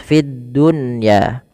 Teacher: alif lam yang tertulis tapi tidak dibaca lamnya langsung ke huruf dal dan dia ditasdidkan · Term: alif lam syamsiah